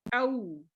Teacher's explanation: واو ساکن سے پہلے زبر ہے تو آواز ہوگی او, حرف لین ہے